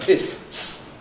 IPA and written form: hɪs (hiss)